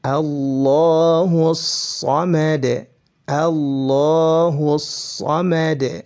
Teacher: Makanya para ulama juga ada yang mengatakan idgham syamsiyah. Karena huruf lamnya itu masuk ke dalam huruf berikutnya.